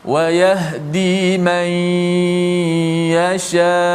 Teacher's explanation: Maksudnya nun masuk dalam ya berserta ghunnah. Bukan masuk ya dulu baru ghunnah. · Nun tu dimasukkan ke dalam huruf ya, dan kita baca dengan ma'al ghunnah. Baca dengan ghunnah. Ghunnah tu dipanjangkan. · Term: idgham